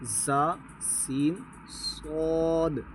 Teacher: ان 3 حروف زا، سین، صاد کو ادا کرتے وقت سیٹی کی طرح تیز آواز نکلتی ہے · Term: حروف صفیریہ